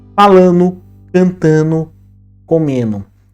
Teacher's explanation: quando a gente vai observar no português não padrão, especialmente na fala, é muito comum a gente ouvir essas palavras sem o D, falando, cantando, comendo. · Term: redução sonora